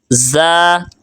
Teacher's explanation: زا سخت لفظ ہے، سیٹی والا، سین سیٹی والا حروف ہے